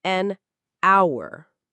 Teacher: Yes, hour starts with H, but we don't say the H